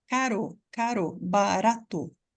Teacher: o r escrito com t ou com D é o som da palavra caro caro barato é o r na ponta da língua